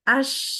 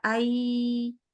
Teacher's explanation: huruf syin itu dia keluar udara Nah kalau ketahan udaranya itu adalah huruf ya